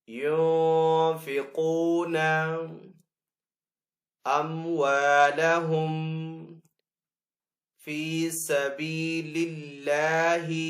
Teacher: اللہ عز و جل کے نام کو باریک پڑھیں گے کیونکہ پہلے والے حرف کے نیچے زیر ہے · نون ساکن ہے، نون ساکن کے بعد فا ہے حروف اخفا میں سے تو یہاں پہ اخفا والا غنہ کریں گے. آگے قاف کو پر پڑیں گے